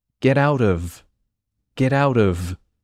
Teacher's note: on paper it's o f but when you're saying it quickly it sounds like a V